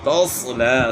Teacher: توصلا، صاد کو موٹا پڑھنا ہے، سین کی آواز کو آپ موٹا کریں گے تو صاد کی آواز بنتی ہے۔ توصلا، زبان تالو کی طرف اٹھنے کی وجہ سے صاد کو ہم نے موٹا کرنا ہے، موٹے حروف میں زبان تالو کی طرف اٹھتی ہے، ہونٹ جو ہے اپنے گول نہیں کرنے۔